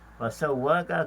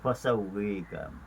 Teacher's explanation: mereka membaca dengan imalah fasawwaka kepada fasawwika